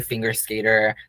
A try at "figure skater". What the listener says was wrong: Bitch, did you just say finger skater? Did you just say finger skater? It's figure skater, honey.